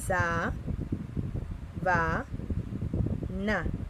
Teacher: separada de la siguiente manera: sa, va, na, y la sílaba tónica es sa.